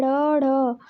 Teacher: जिन व्यंजनों के उच्चारण में जिह्वा ऊपर उठकर मूर्धा स्पर्श करती है, तुरंत नीचे गिरती है, उन्हें उच्छिप्त यानी ऊपर फेंके हुए कहते हैं जैसे ड़, ढ।